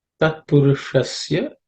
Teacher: Tat purushasya, the sh is cerebral sh.